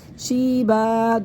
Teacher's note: دو زبر میں سے وقف کی صورت میں ایک زبر ختم ہو جائے گا، ایک زبر باقی رہ جائے گا. الف سے پہلے جب زبر ہو گیا الف مدہ بن جائے گا، اس کے ایک الف یہاں پر کھینچ کے پڑھیں گے شیبا، وقف پڑھیں گے.